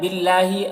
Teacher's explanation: اللہ کے لام کو باریک پڑھنا ہے، کھڑا زبر ہے جو الف مدہ کی طرح ہے۔